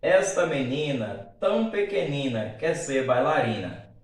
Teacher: houve uma repetição de mesmo timbre vocálico, né? A vogal A, no final dos versos, ocasionando assim a assonância.